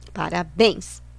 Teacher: A última sílaba é a forte, termina em plural, ens, pum, acento.